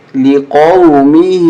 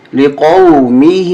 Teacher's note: ہا کو تھوڑا زیادہ کھینچیں کیونکہ مد کی وجہ سے ہم زیادہ کھینچ رہے ہیں